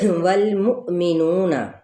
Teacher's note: واو کی زبر کو لام کے ساتھ ملائیں گے اور منہ پہ کیا ہے، ہم نے جھٹکا دینا ہے، مؤمنون، منہ پہ نہیں جھٹکا دیں گے۔